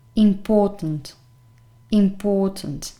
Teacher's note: pay attention to the fact that the stressed syllable is the second one that's why in the phonemic transcription you have the stress here